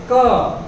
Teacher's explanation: आप बोलिए क, हमारा जो जीभ का बिल्कुल पिछला हिस्सा है वो गले पे जाकर के लगता है।